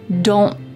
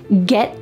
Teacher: My tongue is at the top of my mouth, like it's going to make that T shape, but I just don't let the air come out. Don't get, my tongue is stopped at the top of my mouth. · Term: stopped T's